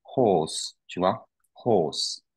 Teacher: Donc il y a un R, mais il ne se prononce pas.